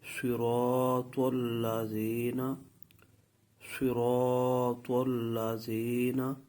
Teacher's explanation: صاد، اس کا مخرج جو ہے زبان کی نوک، اوپر والے دانت اور نیچے والے دانت جس جگہ ملتے ہیں اس جگہ پر زبان کی نوک لگا کر ادا کرنا، یہ مخرج ہے صاد کا۔ · را جو ہے یہ زبان کے کنارے اور اوپر کا تالو کا آگے والا حصہ جو منہ کی طرف ہے وہاں سے ادا ہوتا ہے۔ الف جو مدہ ہے یہ منہ کے خالی حصے سے جوف دان سے ادا ہوتا ہے۔ طا جو ہے یہ زبان کی نوک اور اوپر والے دانتوں کی جڑ سے ادا ہوتا ہے۔